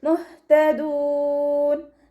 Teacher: ഹ കൽക്കല ലെറ്ററില്ലാത്തത് കൊണ്ട് ഹാഫ് സുക്കൂന് കൊടുക്കുക